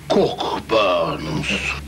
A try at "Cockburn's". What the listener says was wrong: No, we don't pronounce the C-K.